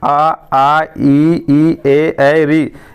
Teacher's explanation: आप इन स्वरों जैसे आ, ई, ए, री जब भी आप इनका उच्चारण कीजिएगा तो आपका ओठ है वो गोल नहीं बनेगा, मतलब मुंह खुल जाएगा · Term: अवृत्ताकार स्वर